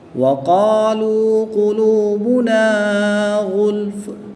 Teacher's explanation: قاف حروف مستعلیہ میں سے ہے، اس کو پر یعنی موٹا پڑھیں گے۔ الف اپنے ما قبل حرف کے تابع ہوتا ہے اور ما قبل حرف پر ہے یعنی موٹا ہے، تو اس لیے اس الف کو بھی پر یعنی موٹا پڑھیں گے۔